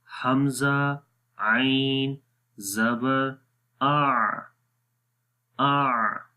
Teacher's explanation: आइन हर्फ के अंदर जो पहली सिफ्त है वो सिफ्त जहर है, जिसमें सांस रुक जाता है और आवाज़ में बुलंदी और कुव्वत आ जाती है।